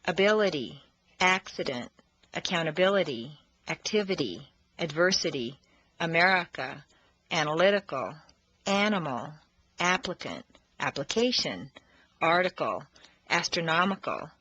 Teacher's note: The letter I in the unstressed position devolves consistently into a schwa.